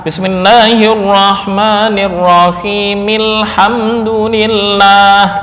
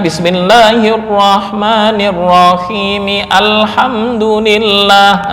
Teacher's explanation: Artinya ketika diwasalkan dengan lafal sebelumnya yaitu bismillah maka hamzah tersebut enggak terbaca. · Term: hamzah wasal